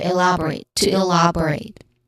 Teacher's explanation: it ends with rate, which has a clear diphthong sound. The diphthong here is A.